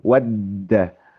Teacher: Karena kalau huruf dal itu ketika misalkan tasdid itu suara huruf dal itu tertahan sebetulnya. Ed da seperti wadda seperti itu.